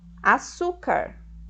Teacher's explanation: a paroxítona que é quando a penúltima sílaba é a mais forte